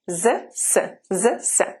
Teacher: Z is the voiced sound, and the devoiced sound is s.